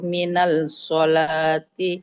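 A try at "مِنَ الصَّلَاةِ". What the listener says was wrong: Tidak minal. Antakosuru minas sholah. Ada shot bertahdid maka langsung dibaca di shotnya.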